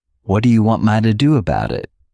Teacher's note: All we're doing is we're not pushing out that T sound. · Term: flat T